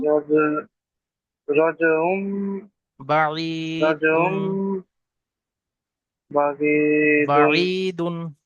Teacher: তানবিনটাকে মিম দ্বারা পরিবর্তন করে এক আলিফ পরিমাণ গুণা করে পড়তে হয়। জি, একে ইকলাব বলে।